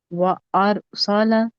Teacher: اور را موٹا ہوگا کیونکہ را ساکن ہے